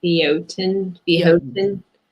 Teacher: it's pronounced without the R, like you're from Boston